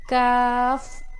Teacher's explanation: قاف زبان کی جڑ جب اوپر کے نرم تالو سے لگے. کاف زبان کی جڑ جب اوپر کے سخت تالو سے لگے